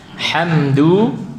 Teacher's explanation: Ha ada sifat hamsnya, ada udaranya.